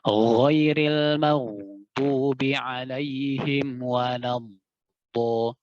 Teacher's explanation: Dan suara huruf dod itu keluar tidak ke depan, tapi dari samping.